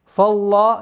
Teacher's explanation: Са твердый звук. Лям мягкая.